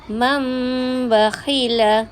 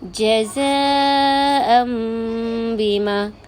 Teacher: Tukarkan bunyi nun kepada mim serta dengung. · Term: iqlab